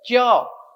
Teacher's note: इन्हें हम तालु की मदद से बोलते हैं। च बोलने के लिए जीभ उठकर तालु की तरफ जाती है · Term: तालव्य व्यंजन